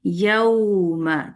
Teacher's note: आपने होठ राउंड करना है। यऊ वाव के लिए और दम्मा के लिए लाजमी होठ राउंड होंगे